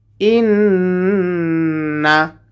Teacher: গুণা হবে কারণ নুনের উপরে তাসদিদ এসেছে